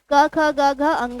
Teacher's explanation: ये कंठ से निकलती है, यहाँ से कंठ को स्पर्श करते हुए वायु निकलती है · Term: स्पर्श व्यंजन